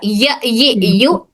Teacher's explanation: हिस्सा तालू के दरमियानी हिस्से को टच कर रहा य यू जबान का मिडिल पार्ट तालू के मिडिल पार्ट को टच कर रहा